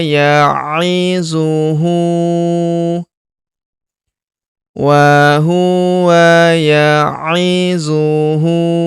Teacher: Huruf hu kita panjangkan dua harakat karena berharakat u terbalik. Kalau harakat u biasa seperti ini dibaca satu harakat.